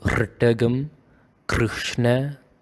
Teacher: You make it a little bit more rough, like in this example, Krishna. The R, it is a R, like a vibrative and a grinding kind of sound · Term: grinding sound